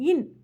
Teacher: மேல்வாய் பல்லின் அடிப்பகுதியை நாக்கின் நுனி முழுமையாக பொருந்தாமல் சிறிது தொட நகரம் பிறக்கும் லைட்டா தொட்டா நகரம் பிறக்குமாம் அதுக்கப்புறம் ர மேல் ர மேல்வாய் பற்களுக்கு சற்று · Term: ரன்னகர